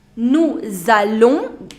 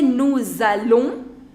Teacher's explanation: Nous is ending with a consonant and allons is beginning with a vowel. So therefore S has to be pronounced. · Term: liaison